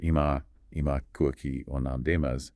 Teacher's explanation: Dropping that E, it's a kind of vowel reduction. It happens in lots of languages where unstressed vowels get sort of softened or dropped.